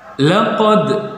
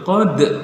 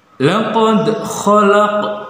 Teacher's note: Nah, dibaca memantul qad. Nah, disitulah bacaan qalqalah.